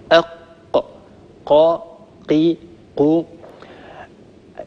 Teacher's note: فأقصى اللسان مع الحنك اللحمي وهو آخر منطقة من الحنك أو قبة الحنك أو سقف الحنك يخرج حرف القاف